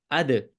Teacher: اد دال قلقلے والا حروف ہے اس کو ریباؤنڈ کرنا